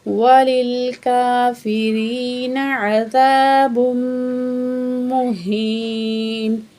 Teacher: یا کو، عذاب مہین، نون 2 پیش نون، عذاب مہین، تو وقف کریں گے تو دونوں پیش ڈراپ ہو جائیں گی، یہاں ساکن کر دیں گے، نون کو ساکن کر کے پڑھیں گے